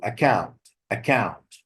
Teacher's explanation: account as a noun or as a verb the same thing the stress is on the second syllable